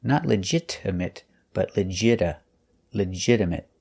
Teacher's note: We notice that the T is pronounced with a fast D sound.